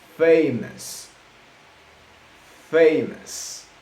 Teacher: there's no vibration on my throat, which means F is a voiceless sound.